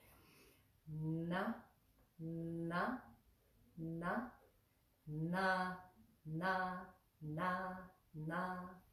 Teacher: pronounced with the tongue placement right on the back of the teeth